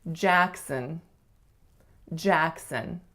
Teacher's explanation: The first syllable is the winner, and it has to be tense, a. The second syllable is a schwas, Jackson. So make sure you don't say son or son or son, because it's really sun, really, really short.